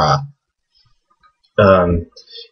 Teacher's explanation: You have to constrict your throat muscles to really pronounce it. If you put your hand on your Adam's apple, you can actually feel it vibrating when you say Ara. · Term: ayn